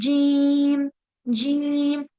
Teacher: जीम ऐसे नहीं करना दांत नहीं मिलेंगे सिर्फ क्या होगा कि जुबान का जो बीच वाला हिस्सा है वो तालू की तरफ उठेगा